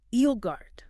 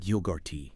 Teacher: The emphasis should be strongly on the first syllable.